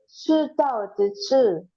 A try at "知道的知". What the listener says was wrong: Ah, tidak turun, Bu. Yang belakang jangan turun. Ya. 知道的知 tetap nada 1.